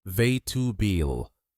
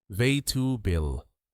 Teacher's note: native speakers don't say all 4 parts. They reduce it. The correct pronunciation is vegetable, just 3 syllables. · Notice how the middle sounds become shorter, almost like they disappear.